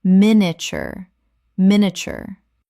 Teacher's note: Three syllables in natural speech. The middle collapses dramatically.